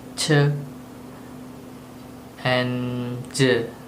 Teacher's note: Affricate consonant is consonant sounds that begins like a stop but release like a fricative, thus making it a sort of combination sound.